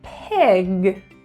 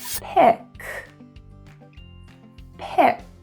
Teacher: If we have the word pig, P-I-G, we do not want to create a voiceless sound, but we want to put a tiny bit, very short, very quick, very soft, g, g. Pig, pig. And hear the difference, compare it to pick, pick. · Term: voiced sound